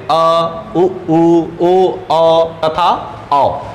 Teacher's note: पश्च स्वर यानी जीभ का पिछला वाला भाग ऊपर उठता है हल्का सा और नीचे बैठता है